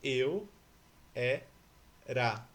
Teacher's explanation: O ra é fraco, ele não é tônico.